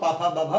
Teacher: अगर हम पा कहेंगे तो दोनों होठ आपस में स्पर्श जरूर करेंगे, बिना स्पर्श के इनको हम बोल ही नहीं सकते हैं। इसीलिए ये पाफा बाभा मा ओष्ठ वाले हैं, इनका उच्चारण स्थान ओष्ठ माना जाता है।